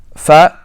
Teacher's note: fat is articulated between the inside of the lower lips